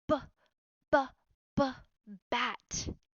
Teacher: when introducing these phonics sounds that you use synthetic phonics properly these sounds are short crisp and clipped breathy sounds